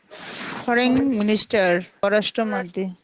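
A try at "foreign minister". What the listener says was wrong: সরাসরি রেন হবে না, আমরা যেমন বৃষ্টির জন্য যেরকম বলি রেন, সরাসরি ওইরকম রেন হবে না। এটা একটু রা এবং এ, এই দুটোর মাঝামাঝি। ফরেন মিনিস্টার, ফরেন ফরেন মিনিস্টার, হ্যাঁ, ফরেন মিনিস্টার,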